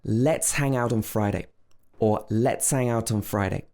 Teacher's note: a so here let's ends with a s sound but hang if we don't say the ha it's more like ang so this is more like a consonant plus